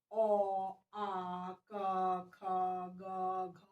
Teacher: ये जितने भी वर्ण हैं ह सब कंठ से उच्चारित हो रहे हैं। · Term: कंठ्य